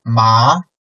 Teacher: the second T is lower the beginning point is lower than the first tone and then suddenly make it upcoming